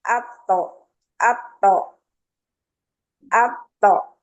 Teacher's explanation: itu bunyi qalqalah ya, jangan diberi harokat